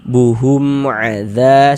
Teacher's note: Dibaca jelas, tidak berdengung, baca pendek saja. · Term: idhar syafawi